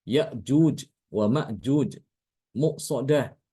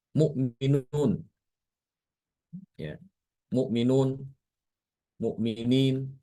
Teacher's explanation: sifatnya syadid, ya, syiddah, ketika diucapkan itu disertai dengan tertahannya suara, ya. Sudah syiddah ditambahi lagi jahar, tertahan juga nafas, ya. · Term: hamzah qata'